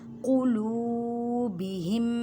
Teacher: لام کو ایک الف کی مقدار میں کھینچ کر پڑھیں، واو مدہ کا قاعدہ ہو رہا ہے۔